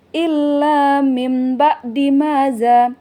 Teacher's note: Maka iqlab ini dia terjadi ketika nun mati atau tanwin bertemu dengan huruf ba. Maka nun mati atau tanwin diubah bunyinya menjadi mim. Jadi bunyinya illa mim ba'di maza, dia hukumnya iqlab.